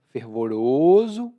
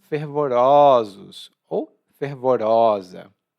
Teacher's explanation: Quando é o plural ou a forma feminina, não é mais fervoroso, mas sim fervorosos ou fervorosa. O O abre um pouco.